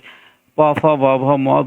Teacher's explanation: এটা হচ্ছে ওষ্ঠ বর্ণ, এটাকে ঠোঁট বর্ণ বলা, মানে ঠোঁটের সঙ্গে এটার মানে এই বর্ণগুলো উচ্চারণ করতে দুটো ঠোঁটের প্রয়োজন পড়ে